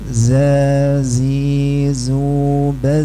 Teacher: Yang pertama za itu enggak boleh desis, murni suara tanpa bercampur desis.